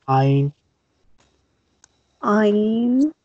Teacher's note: Ayn is pronounced from the middle of the neck. This is upper part of neck.